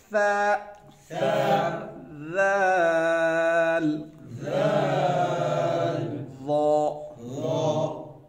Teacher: زبان کی نوک جب سامنے کے دانتوں کی نوک سے ٹکر کھائے تو یہ 3 حرف ادا ہوں گے، ان کو نرمی سے ادا کریں گے، سختی سے نہیں۔ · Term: حروف لثویہ